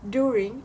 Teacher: the glide of Y sound was dropped